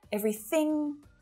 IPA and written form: 'evri θiɳ (Everything)